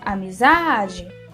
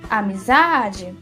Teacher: Percebe que Zá se destaca? é a sílaba mais forte da palavra inteira? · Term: sílaba tônica